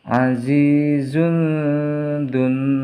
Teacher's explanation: Azizun, di sini ada harokat dhammah, tanwin bertemu dengan huruf zal, maka cara membacanya harus samar